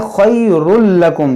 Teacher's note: यहाँ देखें खैरुल लकुम, तनवीन के बाद लाम है, यहाँ पर इदगाम होगा